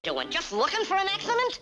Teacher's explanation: he brings his tongue tip too far back and his S sounds sound quite slushy